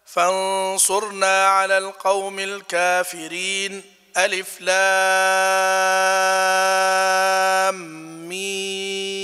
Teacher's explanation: سكتة يسيرة بدون تنفس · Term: السكت